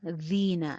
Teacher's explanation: زین یا مدہ ہے، ایک الف کے برابر لمبا ہوگا